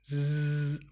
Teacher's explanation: This is because when S follows a vowel sound, we pronounce S and a Z. You should feel your vocal cords vibrate.